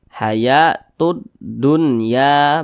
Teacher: huruf lamnya ini dia tidak dibaca makanya di sini huruf lamnya itu tidak ada tanda bacanya langsung masuk ke huruf ke huruf Dal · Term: Idgham Syamsiyah